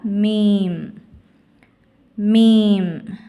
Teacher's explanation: இரு உதடுகளின் காய்ந்த பகுதியில்ிருந்து ஒளிக்க பெறுகிறது